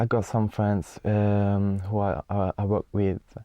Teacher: very clear but again rather monotonous intonation